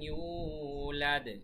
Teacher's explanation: লাম ইয়ালিদ ওয়া লাম ইউলাদ, লাম ইয়ালিদ এখানে কলকলা হবে, তারপরে ওয়ালাম ইউলাদ এখানে এক আলিফ টান, শেষে আবার কলকলা